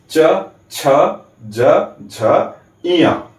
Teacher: तो च, छ, ज, झ, इया का उच्चारण करते समय हमारे अंदर से आती हुई वायु तालु को स्पर्श करते हुए बाहर निकलती है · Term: तालव्य